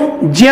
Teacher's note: उच्चारण स्थान के दृष्टिकोण से च वर्ग के हैं, इसलिए इसका उच्चारण स्थान जो है वह तालु और साथ में ये नासिका के सहयोग से किया जाता है, इसलिए इसको ज्ञ बोला जाता है।